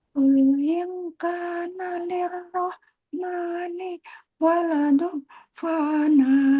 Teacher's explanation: Kemudian waladun ada dengung karena ketemunya huruf fa.